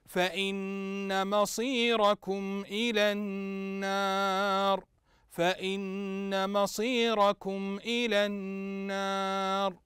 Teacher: النون مشدده وتغني بمقدار حركه